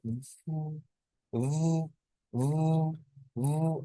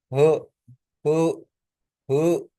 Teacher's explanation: Air flows through a small space, मुंह में थोड़ी सी स्पेस से हवा बाहर निकलती है, मेकिंग अ हिसिंग साउंड, और एक साउंड प्रोड्यूस होती है सरसराहट की सी, जैसे फ साउंड, इसको ये साउंड इसको बोलते हैं। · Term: फ्रिकेटिव